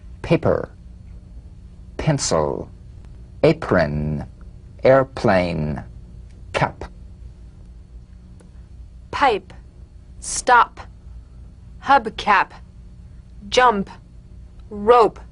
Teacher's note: p is played with a light springing apart of the lips just like for the be on the springing away feel a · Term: drumbeat p